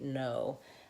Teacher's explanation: actually have to know this vowel sound and produce it exactly the quick fix for know is simply to hold your o longer